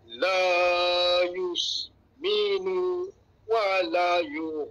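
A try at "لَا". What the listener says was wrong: la panjang. La panjang sikit.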